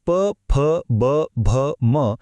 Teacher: हे तर ओठ मिटल्याशिवाय बोलताच येत नाहीत म्हणजे बघा घशापासून ते ओठांपर्यंतचा हा प्रवास किती पद्धतशीर आहे याच · आणि प वर्ग म्हणजे प, फ, ब, भ, म हे तर ओठ मिटल्याशिवाय बोलताच येत नाहीत.